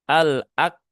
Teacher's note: menunaikan sifat syiddah, tunaikan sifat hamsnya.